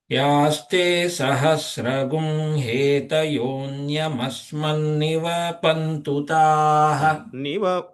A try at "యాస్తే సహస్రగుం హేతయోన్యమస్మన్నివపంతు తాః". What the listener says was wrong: అట్లా నివపంతు, దీర్ఘం రాకుండా స్వరం పైనకి వెళ్ళాలి.